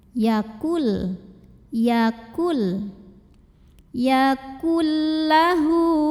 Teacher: huruf nunnya dileburkan ke huruf depan ke lam tanpa disertai dengungan. Berarti ini juga cukup ditekan, tidak perlu ditahan. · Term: idgham bila gunnah